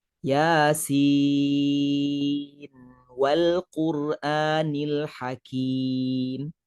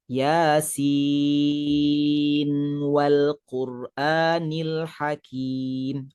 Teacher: apabila menyambung Yasin dengan ayat yang kedua ni tidak diidghamkan. Sebaliknya kita baca dengan izhar.